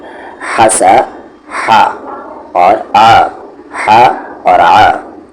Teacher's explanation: ہا اور عین کا مخرج ایگزٹ ایک ہی ہے اور وہ ہے مڈل تھروٹ